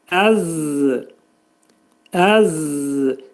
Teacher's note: Burada zəl hərfinin məxrəci demək dil iki dişin arasına girərək xəfifcə şəkildə pəltək Z hərfini demək lazımdır